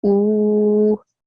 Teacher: So I should say ooh, 2 seconds long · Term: vowel madda